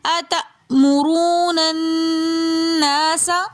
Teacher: حمزہ جب بھی ساکن حالت میں آتا ہے تو حمزہ کو ہم جھٹکے کے ساتھ پڑھتے ہیں